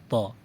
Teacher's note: طا میں ہم نے اس بات کا خیال رکھنا ہے کہ خوب موٹا ادا ہو، کیونکہ طا حروف مستعلیہ میں سے ہے